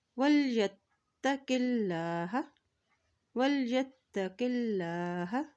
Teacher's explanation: اب یہاں دیکھیں اللہ کے نام سے پہلے زیرہ کی ہے تو اللہ کا نام یہاں پر باریک ادا کیا جائے گا